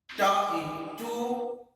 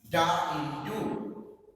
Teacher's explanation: So for example, as pa in pen and ba in pat. Similarly, ta sound is voiceless and da is voiced